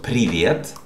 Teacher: the stressed syllable is the first one, при